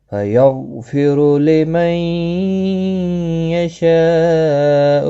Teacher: غین ساکن کو ہلانا نہیں، پر بھی پڑھا جائے گا کیونکہ حروف مستعلیہ میں سے ہیں